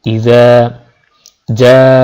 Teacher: ইযা জালের উচ্চারণ জিহ্বার সামনের অগ্রভাগ, জিহ্বার অগ্রভাগ উপরের দাঁতের সাথে মিলে জালের উচ্চারণ হয়।